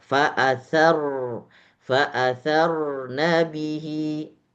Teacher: ketika sudah masuk dengan ro yang sukun itu ditahan satu harakat.